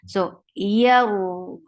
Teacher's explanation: وَإِذْ يَرْفَعُ Ya is a very light letter. The middle of your tongue is raised towards your palate, but it doesn't touch your palate